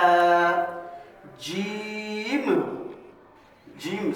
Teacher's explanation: زبان کی درمیانی حصہ اور اوپر تالوں کے درمیانی حصے کے لگنے سے